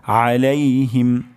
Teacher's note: আইন গলার মাঝখান থেকে উচ্চারণ হবে